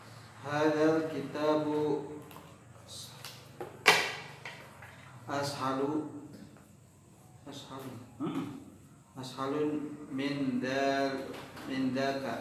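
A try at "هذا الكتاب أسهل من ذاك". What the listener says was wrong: Tidak tanwin. Ashalu saja.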